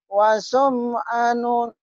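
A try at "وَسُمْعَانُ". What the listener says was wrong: Anya kurang panjang.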